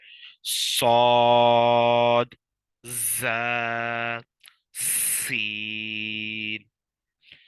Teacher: इनमें सीटी की आवाज आती है · اسی طرح اگلا ہے حروف صفیریہ، ان کو صفیریہ اس لیے کہتے ہیں کہ ان میں سے سیٹی کی آواز آتی ہے۔ زبان کی نوک اور دونوں دانتوں کے اندرونی کنارے سے ادا ہوتے ہیں، ان میں سیٹی کی آواز آتی ہے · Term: सफीर